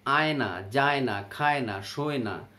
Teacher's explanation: জীব শক্ত তালুর খুব কাছাকাছি আসে কিন্তু স্পর্শ করে না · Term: নৈকট্যমূলক ধ্বনি